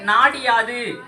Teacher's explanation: நாடு கூட்டல் யாது புணர்ற பொழுது நாடி யாது அப்படின்னு புணர்றப்ப இந்த டீல இருக்கிற ஈ தனக்குரிய மாத்திரை 1 மாத்திரை அளவில் இருந்து குறைந்து அரை மாத்திரை அளவாக ஒலிக்கும். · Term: குற்றியல் இகரம்